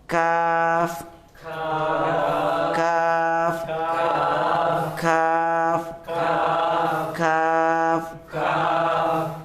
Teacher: tempatnya kaf itu maju sini, maka dia lebih ringan dibanding qaf.